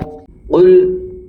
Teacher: یہ قاف زبان کی جڑ اور نرم تالو سے ادا کیا جاتا ہے، اس کو کل نہیں پڑھتے ہیں جیسا کہ عام طور پر یہ غلطی ہوتی ہے۔